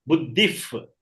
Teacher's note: When pa comes after visarga, it becomes if.